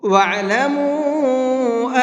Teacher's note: اس چھوٹے مد کو 1 سے 3 الف کے برابر کھینچ کر کے پڑھیں گے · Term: چھوٹا مد